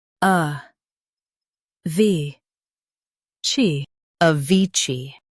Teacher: Stress vi and keep ci light.